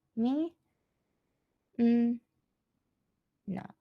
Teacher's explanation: you would think this is only 2 syllables, min and na, but in Japanese, there are actually 3 syllables.